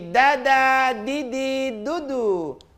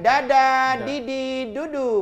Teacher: Lidah, ujung lidahnya di depan antara gusi dengan gigi.